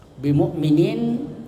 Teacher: Itu disebut mad arid lisukun, ya, mad arid lisukun. Mad yaitu panjang, arid tiba-tiba berhenti dengan sukun, ya, dibaca sukun.